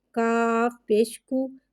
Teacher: کاف کو ایک الف یعنی 3 حرکات کے برابر کھینچ کے پڑھیں گے۔ کاف پہ پیش ہے، پیش کو ہونٹوں کی گلائی کے ساتھ ادا کر کے پڑھیں گے۔